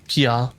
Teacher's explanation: with the first syllable keenly accented and the second drawn out like the scream of a hawk